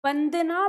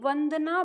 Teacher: अगर यह ब आ रहा है इस तरह से तो इसमें दोनों होट आपस में लगेंगे